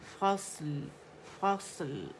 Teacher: طباق والا لیٹر ہے، اس میں سیٹی بھی ہے، رخاوہ بھی ہے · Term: صاد